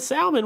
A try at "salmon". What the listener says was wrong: It's salmon. the L Is silent.